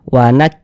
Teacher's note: huruf kaf ini salah satu huruf yang memiliki sifat hamas